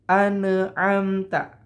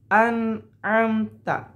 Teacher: Nun di sini tidak boleh ada pantulan